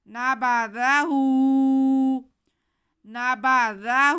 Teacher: آگے ہا پہ الٹا پیش ہے تو ہا کو ہم کھینچ لیں گے۔